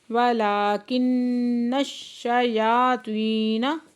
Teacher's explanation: ولکن الشیاطین لام کے اوپر کھڑا زبر ہے، دو حرکت کھینچ کے پڑھیں گے. نون مشدد ہے، غنہ واجبہ کریں گے، نون کو شین کے ساتھ ملا کے پڑھیں گے، شین مشدد ہے، سختی سے پڑھیں گے. · یا کے اوپر کھڑا زبر ہے، دو حرکت کھینچ کے پڑھیں گے.